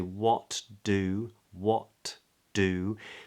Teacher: T and D are made in the same place we only we go to make that first sound the T but we don't release it instead we release into the D · we don't have to say that T at the end of what · made in the same place with the tip of the tongue coming up to the alveolar Ridge the the T and D are made in the same place